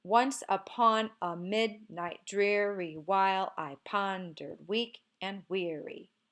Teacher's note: we begin with a stressed syllable followed by an unstressed syllable